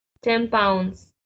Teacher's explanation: we replace the n sounds to m that so the sound change instead of 10 we hear them with m. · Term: assimilation